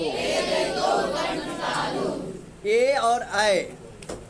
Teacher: ए और ऐ इसका उच्चारण कंठ और तालु से होगा